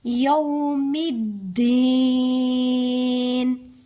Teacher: میم کو مشدد دال کے ساتھ سختی سے ملا کر پڑھیں گے یوم الدین. آگے نون پہ زیر ہے، اگر لاسٹ والے حرف پہ آخری حرف پر زیر زبر یا پیش ہو تو اسے ہم ساکن کر دیں گے، نہیں پڑھیں گے.